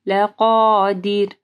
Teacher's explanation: را ساکن سے پہلے دال کے نیچے زیر ہے تو ہم لوگ را کو جو ہے نرم پڑھیں گے